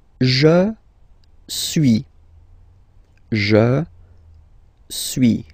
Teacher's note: suis, as you've been noticing, you don't pronounce the final S